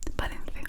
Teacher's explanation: I'm from Spain, my darling, so I make you pronounce the th. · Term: th sound